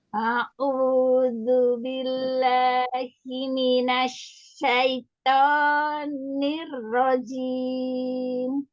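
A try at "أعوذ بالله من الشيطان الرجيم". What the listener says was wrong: Ya, matobi'inya dipendekin lagi ya, jangan panjang-panjang.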